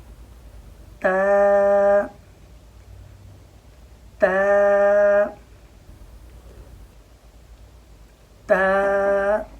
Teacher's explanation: تا کا مخرج ہے زبان کی نوک اور اوپر والے جو یہ 2 دانت ہیں